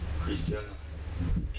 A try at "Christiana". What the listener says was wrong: Christiana. Not a Christina. Christiana Kamara.